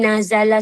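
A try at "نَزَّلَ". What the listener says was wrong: nazala kurang tapi kalau dengan za tu sabdu nazzala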